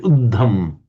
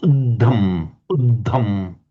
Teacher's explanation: So here we've got a double D, but it's also aspirated.